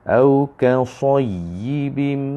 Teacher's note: Tapi secara teknikal kita faham bila tasydid ialah matikan dan dihidupkan balik dengan baris bawah ni. Jadi dia akan berhenti pada makhraj ya, iaitu tengah lidah, hurufnya nipis, dan ni ya tu dibariskan bawah pula.